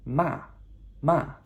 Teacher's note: the final tone is a sharp falling tone that's the fourth tone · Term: 4th tone